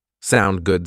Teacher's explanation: native speakers will often shorten that just to sound good with a rising intonation